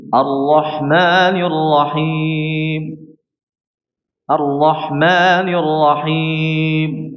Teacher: Memotong suaranya ketika waqaf sehingga hampir menjadi suara huruf ba. Huruf mim jadi huruf ba.